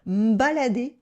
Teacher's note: Here we drop the e in me so we can speak faster.